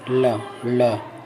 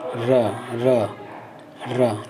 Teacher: ल लुंठित नहीं है, र लुंठित है और ल पार्श्विक है। याद रखिएगा, ल एक पार्श्विक ध्वनि है।